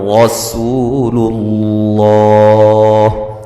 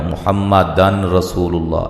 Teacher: یہاں نون تنوین کا ادغام ہے، بلا غنہ ہے، ٹھیک ہے، اس کو دن رسول اللہ نہیں کہنا، محمد دن رسول اللہ ایسے نہیں پڑھیں گے۔